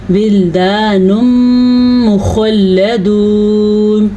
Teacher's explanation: جی یہ خوا پر پڑھیں گے کیونکہ خوا جو ہے حروف مستعلیہ میں شامل ہے · یہاں پہ ادغام بالغنہ ہوگا، غنہ کر کے پڑھیں گے